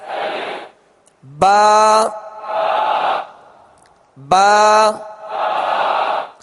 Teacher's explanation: با کا جو مخرج ہے دونوں ہونٹوں کے تر حصے سے یہ ادا ہوتا ہے، دونوں ہونٹوں کے تر حصے سے ادا ہوتا ہے.